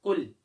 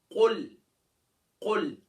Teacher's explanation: قاف موٹا ہے, اس کا مخرج یعنی یہ زبان کی جڑ و تعلق کے نرم حصے سے ادا ہوگا